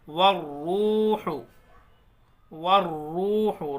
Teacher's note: را کے اوپر تشدید ہے، تھوڑا سختی سے پڑھیں گے